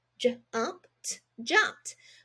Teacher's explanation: When you add ED to the ends of words, it can also make a T sound